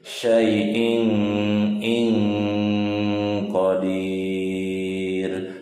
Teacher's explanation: Hukumnya adalah ihfa ya. Ini harus disamarkan, mendengung.